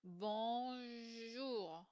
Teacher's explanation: si je reviens vers le mot bonjour, entre le N et le J, il n'y a pas de voyelle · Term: sans voyelle